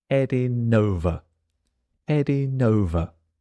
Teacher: same thing with heading the G disappears The N joins the next word